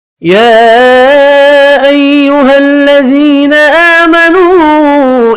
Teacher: یا کے اوپر چھوٹی مد ہے، 3 الف کی مقدار میں کھینچ کر پڑھیں گے